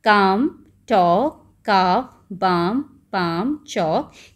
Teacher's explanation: ये वर्ड्स हैं काम, टॉक, काफ, बाम, पाम, चौक, जिसमें एल की साउंड नहीं होती है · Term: साइलेंट